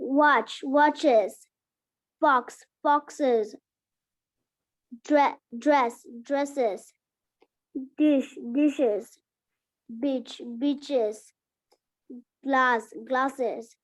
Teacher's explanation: বানানের বেলা আমরা ইয়েস লাগাবো, কিন্তু উচ্চারণের বেলা কি উচ্চারণ করব? আইজেড।